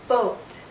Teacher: in boat vot o this is another long vowel sound o our lips are very rounded but it's more open